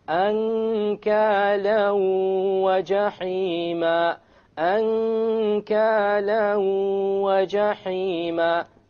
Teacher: أَنْكَالًا وَجَحِيمًا أَنْكَالًا وَجَحِيمًا. You merge the tanween along with the waw and you move on. You don't pronounce the end sound and you have a ghunna. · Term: idgham with ghunna